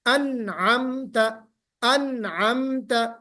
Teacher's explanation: फिर से कहिए, अनअमत अन, बिल्कुल अनअमत आवाज, हाँ आवाज नून में बिल्कुल जम जानी चाहिए, ठहर जाए